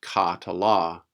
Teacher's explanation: the first syllable is supposed to be pronounced as an open syllable and as an open syllable it will have to have a long vowel